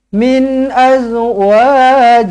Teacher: Min nun mati bertemu dengan hamzah, nun mati izharu halqi. Nun mati izharu halqi. Jelas dan terang.